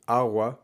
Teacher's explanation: a hard g agua that doesn't really exist in most cases in most varieties of spanish you'll hear people say awa with a soft g